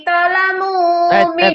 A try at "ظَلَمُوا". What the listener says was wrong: Bukan talamu, zalamu ada titiknya.